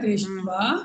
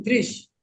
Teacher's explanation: तो दृष्टवा में हाँ आपका मूर्धन्य श हो जाएगा, तालव्य श हट जाएगा।